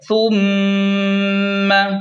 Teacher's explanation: یہاں پر میم مشدد ہے تو یہاں غنہ کریں، یعنی غنہ واجب ہے